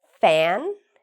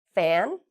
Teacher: you'll notice my teeth touch my lower lip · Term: F sound